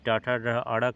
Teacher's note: ट का उच्चारण मूर्धा यानी जीभ का तालु के कठोर भाग से स्पर्श होता है